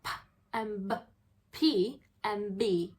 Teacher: So the p, which is p, sound is voiceless, but the b sound is voiced.